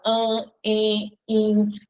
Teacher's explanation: As vogais no meio da palavra, diante de M e de N, vão ficar com um som nasal.